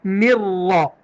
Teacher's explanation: یہ ہونٹ گول کرتے ہیں تو نوا کی آواز نکلتی ہے، واو کی آواز نہیں اس میں آئے گی